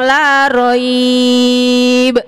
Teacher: Berarti kalau berhenti di roib menjadi mat lain, bacanya jadi panjang